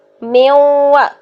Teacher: نون کی آواز کو واو کی طرف لے کے جانا ہے، یعنی نون اور واو کو ایک دوسرے کے اندر مکس اپ کرنا ہے